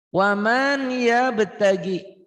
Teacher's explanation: Ada idgham bi gunnah, dimasukkan, dileburkan, disertai dengan dengung.